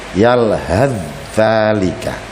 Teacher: sa diganti dengan dzal sehingga membacanya menjadi yalhath dzalika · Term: idgham mutaqaribain